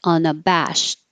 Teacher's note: you hold the t so you won't hear it